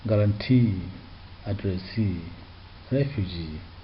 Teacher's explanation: You find out that in these words the third syllable takes the stress